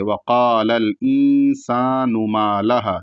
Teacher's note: نون پر جو پیش ہے اس کو کھینچیں گے نہیں، اس کو جلدی پڑھیں گے